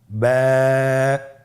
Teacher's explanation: বা হরফে টান হবে এক আলিফ টান